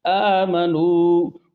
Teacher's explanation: مدہ کو ناک سے نہیں نکالنا بلکہ جوف دہن سے نکالنا ہے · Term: وہ مدہ